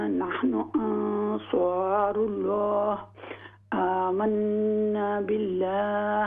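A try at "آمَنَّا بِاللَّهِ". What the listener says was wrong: अलिफ पूरा पढ़िए।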